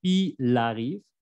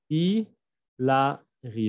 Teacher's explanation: aquí la L de il y el se va a pegar como fonéticamente il arrive.